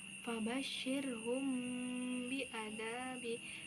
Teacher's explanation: Cara membaca dari ifa syafawi itu yaitu samar di bibir dengan berdengung